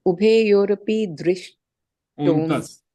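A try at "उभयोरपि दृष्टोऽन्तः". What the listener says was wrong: Yeah, this S जो है ना बीच में, this is ignore it. It just says that पहले यहाँ पे अ होता था, वो अ निकाल दिया है.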